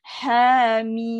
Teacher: Hamim. Mim tutup mulut sebab belakang dia mim.